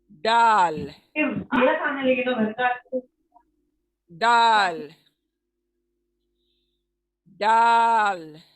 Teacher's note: ये अदा होता है जबान की नोक, जबान की नोक जो है सामने की, वो सामने के ऊपर वाले दांतों की जड़ से लगते हैं। जबान की नोक सामने के दांतों की जड़ को लगने से दाल अदा होता है।